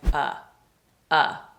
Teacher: Oftentimes, of turns into a sound like a.